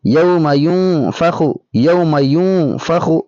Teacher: یوم ینفخ، یوم ینفخ، ناک میں آواز ہونی چاہیے